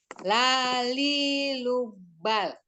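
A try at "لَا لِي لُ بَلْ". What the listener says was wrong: Jangan tegas-tegas berhentinya takut. Lam kan tawasud, jangan terlalu tegas. Lalilu bal. Jadi enak gitu.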